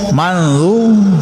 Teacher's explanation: Ya, ini hukumnya ikfa ya. Jadi disembunyikan atau disamarkan suara nun mati.